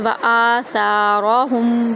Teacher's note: تو اس کو ہم ایک الف کے برابر لمبا کریں گے، حمزہ اور سا کا وزن ایک برابر ہو گیا، ان دونوں کو ہم ایک جتنا لمبا کریں گے